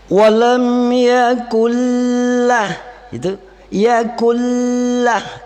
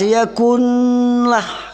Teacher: Nun mati dimasukkan ke dalam huruf la, tidak boleh didengunkan. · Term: idgham bila gunnah